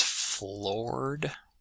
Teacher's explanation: we've got the open o and r combination. That's our or um r colored vowel. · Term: OR, R colored vowel